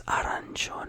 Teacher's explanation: arancione, a quick roll of the R, and not sioni, gione, like all at once, not sioni, you know.